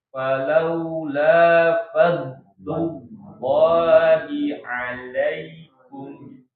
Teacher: Dot punya sifat rokhoa, suaranya makanya nggak berhenti